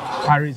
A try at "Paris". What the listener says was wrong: That S. That S is silent.